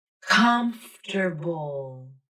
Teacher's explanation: The letter A is gone from the pronunciation, so that leaves the final syllable as bull, bull. Just a B consonant and a dark L.